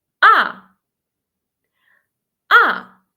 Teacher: Fallen sharply. Like when you're angry and say no. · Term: last tone